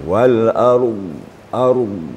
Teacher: di akhir Wal ARD ini dnya sedikit lagi tambah bunyinya lebih lebih lama gitu walard ARD sebab sifat D tu adalah istitalah ya istitalah